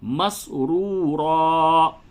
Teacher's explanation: دونوں را کو پر کر کے پڑھیں گے